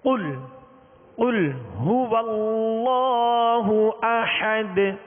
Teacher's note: اس کو پر کرنا ہے. یہ 2 نقطے والا قاف ہے حروف مستعلیہ میں سے، لہذا پر پڑھیں گے